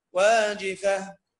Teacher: التاء المربوطة في المصحف لما نقف عليها نقف عليها بالهاء